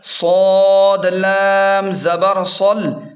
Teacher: صاد کو خوب موٹا اور پر پڑھیں گے اور لام پر تشدید کی وجہ سے تھوڑا زور دیں گے۔